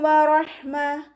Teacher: ഹ മഹ്റജ് വരുന്നത് തൊണ്ടയുടെ മധ്യഭാഗം തന്നെയാണ്.